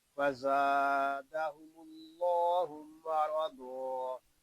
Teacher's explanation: یہاں زا کو ہم ایک الف تک کھینچ کر پڑھیں گے کیونکہ یہاں الف مدہ ہو رہا ہے · زا کو سختی کے ساتھ ادا کریں گے اس میں سیٹی کی آواز آئے گی کیونکہ زا حروف سفیریہ میں سے ہے · یہاں اللہ پاک کا لام اس لیے پر ہو رہا ہے کہ اللہ پاک کے لام سے پہلے حرف پر پیش ہے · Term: لام پر